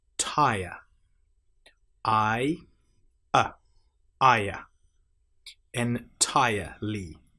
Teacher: make sure you don't pronounce the r in entire. It's not entirely, it's entirely.